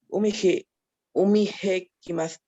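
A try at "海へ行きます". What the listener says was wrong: No es aspirada, es muda. Umie ikimasu.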